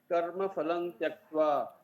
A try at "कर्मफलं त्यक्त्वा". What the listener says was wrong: यस